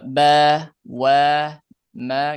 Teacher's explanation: Huruf ba ini gampang ya karena tinggal ee menempelkan dua bibir syafatan. Huruf ba, mim, dan wau ini satu makhraj.